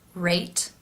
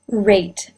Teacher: Notice in the R sound for rate that the lips are more rounded